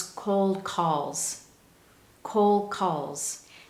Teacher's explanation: you don't hear that strong d sound at the end of cold instead it becomes cold calls col calls now that you have